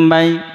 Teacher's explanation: Ini di sini disebut idgham misli. Maka suara mim pertama dimasukkan ke mim kedua. Maka suaranya betul-betul mendengung.